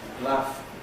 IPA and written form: læf (laugh)